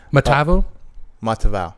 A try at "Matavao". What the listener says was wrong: Matavao. He was right, but he was using D instead of T.